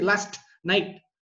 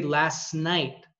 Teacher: your tongue is at the alveolar position, but it doesn't do a stop on a nasal. It just drops the stop and does the nasal.